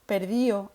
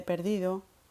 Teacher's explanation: La pérdida de la D intervocálica o entre vocales, por ejemplo, cuando decimos en los participios perdío en vez de perdido, adaptado en vez de adaptado.